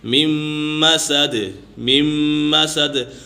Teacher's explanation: نون کو یعنی کہ گرا کر اور میم کو میم کے ساتھ ملائیں گے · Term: ادغام یرملون مع الغنہ